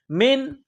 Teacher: نون ساکن کے بعد ہا ہے، حروف حلقی ہے، تو یہاں نون ساکن پر غنہ نہیں کریں گے